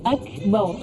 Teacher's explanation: Jadi akbar ini bacanya cukup hamas saja. Jadi ada desis akbar, bukan akbar.